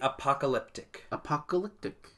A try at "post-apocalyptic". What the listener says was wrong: you're saying apoc apocalyptic you're adding an extra tee